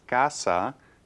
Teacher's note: But notice casa, the stress is on the next to the last syllable. We don't place an accent because this word ends in a vowel.